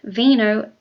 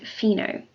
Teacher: lower front teeth together and forcing air through the narrow passage the V is voiced and the F is not